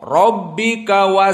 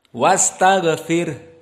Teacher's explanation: Maka ra di sini muraqqaqah, tidak seperti rabbika, tapi wastaghfir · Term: Ra muraqqaqah